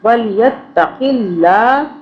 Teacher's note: اب اللہ باریک پڑھیں گے، اللہ سے پہلے زیر آ رہا ہے